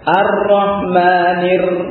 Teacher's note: ra ini memiliki kekhususan dengan sifat takrirnya